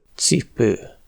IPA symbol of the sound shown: t͡s